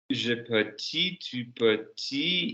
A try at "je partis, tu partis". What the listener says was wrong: You're saying per. You're saying per. Be vowel accurate, fella. Up in the air. Pa, not per.